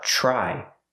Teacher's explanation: The TR makes a ch sound like chicken, plus the R